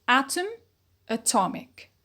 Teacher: there is a stress shift and also we notice a change in the vowel quality